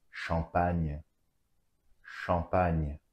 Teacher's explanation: A and M together is the nasal vowel en.